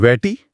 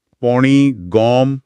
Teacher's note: પહેલા આવો અનુનાસિક ધ્વનિ હોય તો એ સ્વર પહોળો થઈ જાય ઈ નો એ જેવો કેટમાં એ હોય એવો અને ઉ નો ઓ જેવો કોટમાં ઓ હોય એવો સંભળાય છે